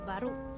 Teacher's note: Perbezaan yang ketara dari segi sebutan dan ejaan dalam dialek Melayu Kuching ialah perkataan baru mengalami penggelotisan di akhir kata dan disebut sebagai baru.